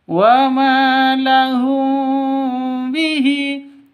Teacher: mim mati bertemu dengan ba samar didengungkan ya karena bacaan ikhfa s ikhfa syafawi.